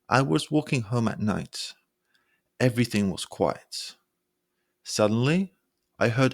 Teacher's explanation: using a held pitch to sound more engaging in a speech